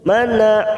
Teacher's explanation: fokus pada huruf nun yang bertasjid kita tekan selama tiga ketuk